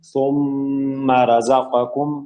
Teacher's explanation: میم کے اوپر تشدید ہے، تو تشدید میم اور نون پہ جب بھی آئے گی تو غنہ ہوگا، زیادہ غنہ